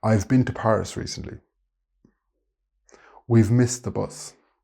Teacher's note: In full sentences, the V contraction sound can be very subtle, but native speakers can hear it distinctly.